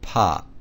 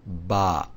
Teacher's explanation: the P makes a harder sound while the B resonates in the vocal cords